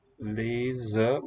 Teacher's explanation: if it's between vowels, it's voiced z, spelled with z.